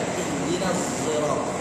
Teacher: Ada yang baca dengan ismam bizai, mencampur suara dengan huruf zai